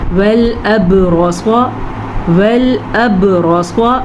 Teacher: وَالْأَبْرَصَ، وَالْأَبْرَصَ، با پہ پھر سے کلکلا ہو رہا ہے، را کو پر پڑھنا ہے کیونکہ را پہ زبر ہے. صاد کو پر پڑھنا ہے کیونکہ صاد تو ہمیشہ ہی پر پڑھا جاتا ہے.